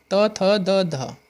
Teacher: देखो त, थ, द, ध ये तो होगी दंत्य